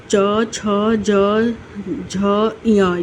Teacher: च वर्ग जो होता है, च, छ, ज, झ, य, ये तालु से निकलता है